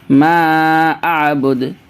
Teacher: ما کو بھی کھینچیے، مد ہے